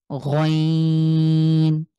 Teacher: বাংলার গ এর মতন গ তবে একটু কন্ঠের শেষ থেকে আমরা ট্রাই করবো গ টাকে আমরা স যেভাবে উচ্চারণ করেছি সেম